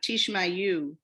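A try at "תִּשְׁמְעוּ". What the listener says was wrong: There's no yet there.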